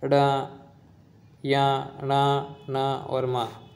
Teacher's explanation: मुख प्लस नाक से उच्चारण किया जाता है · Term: नासिकीय व्यंजन